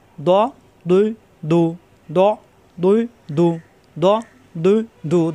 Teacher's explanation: জিহ্বার গোড়ার কিনারা উপরের মাড়ি দাঁতের গোড়ায় লাগিয়ে দদ